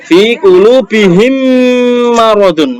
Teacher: mem ketemu mem harus dimasukkan dengan mendengung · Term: idgham mimi